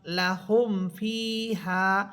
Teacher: মিম সাকিনের পর ফা হরফ গুন্না হবে না